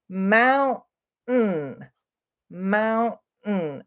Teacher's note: we don't pause when we say it, but you can hear that little stop in the word mountain.